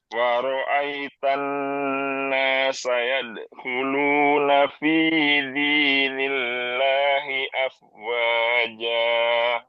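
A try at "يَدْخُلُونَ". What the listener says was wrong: Eh pantulannya diseret ya.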